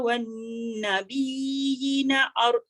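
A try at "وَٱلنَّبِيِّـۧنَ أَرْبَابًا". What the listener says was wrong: nampak nabiyina. Dia tak boleh yina. Wannabiyina arbaba. Ya, ada simbol kecil atas ya tu adalah huruf ya. Itu mat tamkin.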